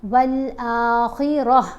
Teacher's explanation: گول تا کے اوپر وقف آ جائے تو تا سائلنٹ ہو جائے گی، ہا کی آواز دے گی